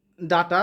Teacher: ডাটার ড হচ্ছে মূর্ধন্য ব্যঞ্জন ট হচ্ছে মূর্ধন্য ব্যঞ্জন